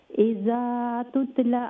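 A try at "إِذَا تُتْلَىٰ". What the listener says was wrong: اچھا تتلا میں دیکھئے لام کے بعد لام کے اوپر جو ہے لونگ فتحہ ہے تو اذا تتلا لونگ کا مطلب بھی آواز کو لمبا کرے. تتلا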